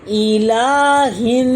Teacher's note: لام کے اوپر کھڑی زبر ہے جس کو ایک الف کے برابر کھینچا جائے گا، لام کھڑی زبر لا، ای لا، ہا زیر نون ہن، الہن، الف اور لام سائلنٹ ہیں، ہا کی زیر سیدھا نون کی شد سے ملے گی